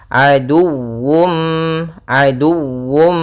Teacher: di sini harus dibaca juga dengan sempurna wawunya dengan tasydid